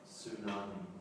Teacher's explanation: I think to make it easier, I think we actually pronounce the word without the T. Tsunami. Okay, so that's a really big wave.